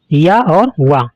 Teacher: इन ध्वनियों के उच्चारण में उच्चारण अवयवों में कहीं भी पूर्ण स्पर्श नहीं होता तथा श्वास वायु अवरोधित रहती हैं। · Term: अर्धस्वर